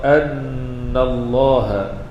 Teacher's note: Allah itu dibaca dengan tebal.